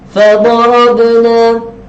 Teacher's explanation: ba huruf qalqalah dibaca dengan bunyi lantunan